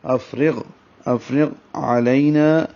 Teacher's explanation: غین کو ہلائیں گے نہیں اور غین پر ہوگا موٹا ہوگا